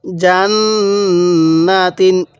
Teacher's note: নুনের উপর তাজদিদ আছে আমরা এটা গুন্নাহ করব